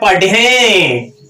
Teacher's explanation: पढ़े नाक से बोलना पड़ता है, अनुस्वार है